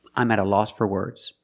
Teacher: For is pronounced fur, because it's not stressed.